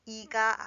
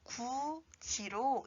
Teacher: 디귿 받침 뒤에 이 모음이 이어진 경우에는 디귿이 지읒으로 바뀌고 이 모음이 결합하여 지로 읽습니다. 그래서 굿이가 아니라 구지로 읽어야 합니다.